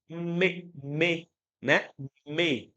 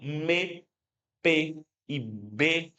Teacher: Para falar P ou B, eu toco os lábios, né? São consoantes bilabiais.